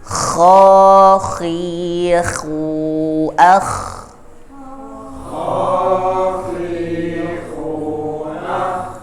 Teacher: Jadi tetap pertahankan getaran yang ada di tenggorokan bagian atas.